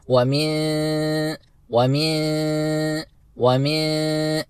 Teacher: ومن میں ہم نے جیسے کہ پچھلی 2 کلاسز میں بھی پڑھ لیا تھا کہ اگر نون ساکن کے بعد کوئی بھی حرف حروف اخفا میں سے آ جائے تو ہم نے نون ساکن کو ادا کرتے وقت ہلکی سی غننے کی آواز ناک سے نکالنی ہوگی